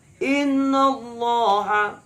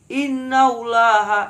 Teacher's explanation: tebal karena berawal dengan Fatah innauloha tidak boleh dibaca dengan tipis inallahha itu kliru jadi yang